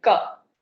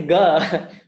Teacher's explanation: So suppose you say the letter ka. This k sound, I can make that sound without using my voice at all. You can hear it, but I cannot say ga without using my voice.